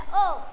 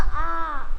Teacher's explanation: अ म्हटलं की स्टॉप होतो, आ म्हटलं की बघा आ उच्चार लांब जातो.